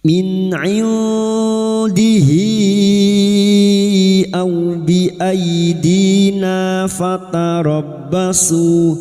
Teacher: Nun sukun bertemu dal ikhfa hakiki kita samarkan bunyi nun sukun dan mendengung selama 3 harokat